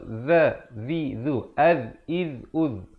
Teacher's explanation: Zal, makhrajnya mestilah hujung lidah itu keluar.